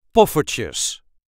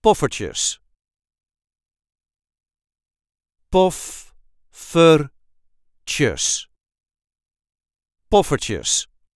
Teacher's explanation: The emphasis is on the first syllable.